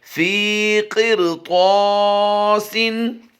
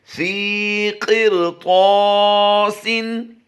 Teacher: रा साकिन के बाद फ़ौरन ही हुरूफ़ मुस्तालिया से तो आ गया है, तो इसकी अदायगी भी हम पुर करेंगे, इस रा को भी हम पुर करेंगे, और तो अलिफ ज़बर तो को हम लंबा करेंगे।